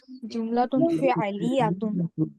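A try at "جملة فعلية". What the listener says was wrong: লিয়াতুন বলো কেন? লিয়াতুন, ইয়ার মধ্যে তাসদীদ হবে।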